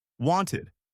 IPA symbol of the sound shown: ɪd